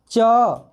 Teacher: आपका जो जीभ है वो आपके तालु में ऐसे चौड़ा होकर चिपक रहा होगा।